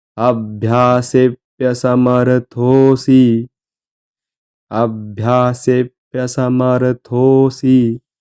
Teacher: म्हणायची अभ्यासेप्य समर्थोसी अभ्यासेप्य समर्थोसी थ ला एक कान एक मात्रा थो थोडं लांबवायचं दीर्घ असं म्हणायचं